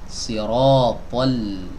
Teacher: Ketebalan itu ada pada huruf to, tapi tidak ada pada huruf lam. Jadi tatkala kita mengucapkan huruf to tebal, huruf lamnya tidak boleh dibaca tebal.